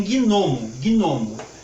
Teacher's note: é uma palavra dissílaba, paroxítona, que tem o seu acento tônico na primeira sílaba